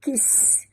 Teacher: Bunyikan safir pada sin yang mati.